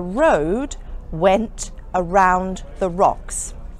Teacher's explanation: here I pronounced all the R's as they all had vowels following them.